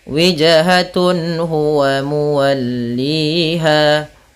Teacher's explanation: apabila ada nun sukun atau an, in, un bertemu dengan huruf halqi yaitu huruf tenggorokan, salah satunya huruf ha, maka dia harus dibaca dengan jelas suara tanwin atau nunnya. Dan tidak boleh ditahan, tidak boleh walikulli wijhatun nggak boleh, tapi jelas saja wijhatun huwa muwalliha. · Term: izhar halqi